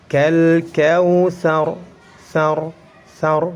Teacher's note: Apabila ra tersebut sukun karena waqaf, kemudian sebelum ra itu ada harokat fathah, maka harus dibaca tebal.